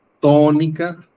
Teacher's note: Sílaba tónica, to. Por lo tanto, está en la antepenúltima. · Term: esdrújula